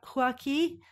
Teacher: there's like a little glottal stop or like an apostrophe